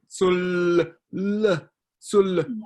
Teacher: hard for Chinese speakers to say the L at the end of a word because that doesn't happen in Chinese